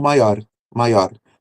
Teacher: aquele R rapidinho que a língua bate ali nos alvéolos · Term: TEP